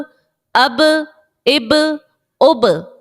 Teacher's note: बा साकिन है और बा हरफे कलकला का है। तो हमने इसको खूब जाहिर करके अदा कर दिया